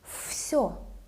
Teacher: Voiceless S makes letter V to sound like F.